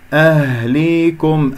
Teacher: الهاء باهتزاز الأوتار الصوتية في منطقة أقصى الحلق، فانتبهوا لا تخرجوها هاء صدرية أو من الرئة.